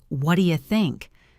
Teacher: In fast speech, this sounds like, what do you think? the what do you blends together into one quick sound.